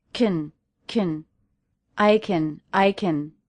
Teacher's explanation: hardly see you is because power is out in this sentence the word can is a helping verb it's not the main verb so it's a function word and I'm reducing it to Kin